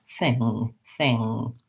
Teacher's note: I'm not going to let my tongue drop down. And then I won't have any g or k sound. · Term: NG sound